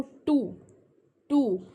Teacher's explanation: जब आप बोलते हो टू, टू, तो आपका टिप ऑफ टंग जो है वो अपर टीथ रिज से के जो तालू बोलते हैं ना, तालू ऊपर हमारा, तो जो हमारी जीभ का किनारा है वो तालू को टच करता है, then we can be able टू speak टू। तो वो जो टिप ऑफ टंग है वहाँ ऊपर जाके फिक्स हो जाता है और मुड़ जाती है हमारी टंग, then only we can speak first टी।